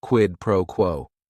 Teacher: And if you're saying it together, the stress is kind of on that first word and that last word